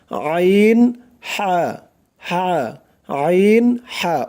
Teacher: গলা চিপে, মানে গলার মাঝখান থেকে গলা চিপে উচ্চারণ করতে হবে।